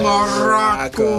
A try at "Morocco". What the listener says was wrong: No. You don't have to roll it. it like that. It's not Morocco. Morocco. Well, it depends how you say it.